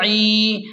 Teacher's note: فی، عین یا زیر عی، عین کو حلق کے درمیان سے صاف نکالیں اور یا مدہ ہے تو اسے کھینچیں ایک الف کے برابر.